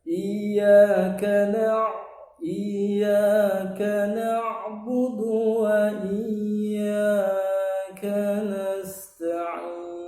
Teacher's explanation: Iyyaka na'budu wa itu seharusnya tidak qalqalah, karena ain itu bukan huruf qalqalah.